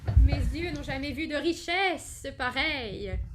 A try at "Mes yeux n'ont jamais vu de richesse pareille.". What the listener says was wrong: Brilliant.